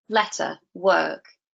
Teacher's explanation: do not pronounce the R sound in words like letter or indeed in a word like work so you get letter work you don't get letter work see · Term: not rhotic